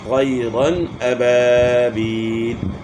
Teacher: یہاں دو زبر کی تنوین کے بعد حروف حلقی میں سے حمزہ آ گیا ہے، تو اس لیے یہاں غنہ نہیں کرنا، اظہار کرنا ہے